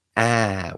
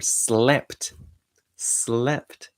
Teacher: say ah with a big open mouth and for slept, slept, with a little bit more closed mouth